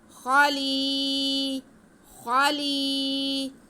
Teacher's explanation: فی الارض، فی الارض خلیفہ، خا پہ زبر، لام کے نیچے زیر اور آگے یا ساکن، تو یہ یا مدہ ہو گیا، لام کے بعد کو ہم کھینچیں گے۔